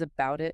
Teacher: If a T or D comes between vowel or diphthong sounds, even if one sound ends a word and the next starts the next word, it becomes that quick flap TD.